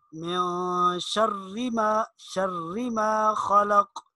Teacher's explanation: آگے شرری، اس را کے نیچے زیر ہے تو اس کو باریک پڑھیں گے